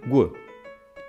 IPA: gʷ